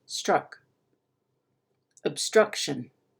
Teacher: what you should be able to hear is that struck is a little bit higher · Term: pitch